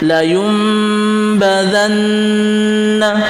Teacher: gunah musyaddah memang sifatnya sudah gunah kita dengungkan kita panjangkan dengungnya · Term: gunnah musyaddah